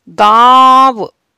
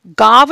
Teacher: गले से और नाक से दोनों से आवाज आई और कहीं भी नहीं रुकी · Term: अनुनासिक